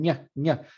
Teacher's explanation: You'll feel the middle of your tongue kind of touching your hard palate. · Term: dorso palatal